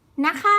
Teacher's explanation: the key is to prolong the sounds of the word to be longer and add the tone to it to be higher